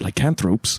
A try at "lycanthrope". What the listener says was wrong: Sir, you put the emphasis on the wrong syllable.